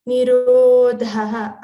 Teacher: again ro is long and dha is a mahaprana · Try to make the sound vr, not like ri or ru or ra, it is vr.